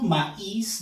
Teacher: En este caso, maíz, nos damos cuenta que la I lleva énfasis, lleva fuerza de voz. Eso permite la separación. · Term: hiato acentual